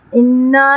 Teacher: لام جلالہ سے پہلے زبر ہے تو یہاں ہم پر پڑھیں گے، موٹا پڑھیں گے